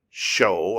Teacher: i got that dip in there third tone